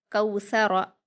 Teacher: रा पर हरकत है, इसको हम जल्दी पढ़ेंगे और पुर पढ़ेंगे